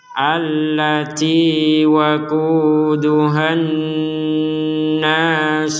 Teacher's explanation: Di sini dengung, nun bertasdid kita dengungkan